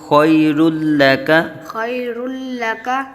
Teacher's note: وَلَلْآخِرَةُ وللآخرة خَيْرٌ لَكَ، خير لك ہاں یا لین کا قاعدہ اور دو را کے اوپر دو پیش، را کو پر پڑھا جائے گا اور دو پیش کی تنوین کے بعد حروف یرملون میں سے لام آ رہا ہے تو یہاں ادغام بلا گنہ، ادغام بنا بلا گنہ یعنی بغیر گنہ کے یہاں ادغام ہوگا.